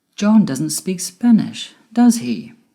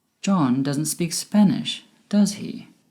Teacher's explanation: My voice went down at the end with does he? Because I am sure he doesn't speak Spanish, but it would be great if you could confirm this with me. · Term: Falling intonation